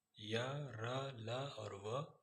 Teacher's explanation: अंतस्थ व्यंजन के उच्चारण में मुख के अंगों से जीभ स्पर्श करती है, लेकिन पूर्णतः स्पर्श नहीं हो पाती।